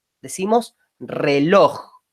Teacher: La palabra reloj tiene dos vocales, pero la que recibe el tono, la fuerza, el acento, es la O, ¿no? Decimos reloj, no decimos reloj. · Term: vocal tónica